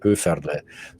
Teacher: so I'm from the south so we roll our RS at the front of our mouth